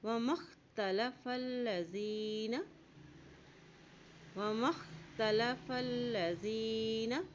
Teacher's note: وما اختلف الذین، وما اختلف الذین، میم کی زبر کو خا کے ساتھ ملائیں گے، وما اختلف، فا کی زبر کو لام سے ملائیں گے، لام کے اوپر شد ہے